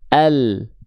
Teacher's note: huruf lam itu dilafalkan dari tepi lidah bagian depan yang kanan menyusur sampai ke ujung lidah. Begitupun tepi lidah bagian depan yang kiri menyusur sampai ke ujung lidah.